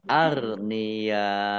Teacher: bertemu dengan huruf hamzah dalam satu kata maka menjadi mad wajib muttasil dibaca panjang Harus lima harakat